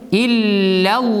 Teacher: Аллах сүзендәге лам калын, сузыла ике хәрәкәт, һәм туктыйбыз.